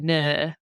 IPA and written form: nɜ: (no)